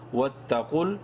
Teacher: واو تا زبر ود تا زبر تا قاف لام پیش قل. واو اور یہ دونوں الف سائلنٹ ہیں، قاف کو منہ بھر کے پڑھیں گے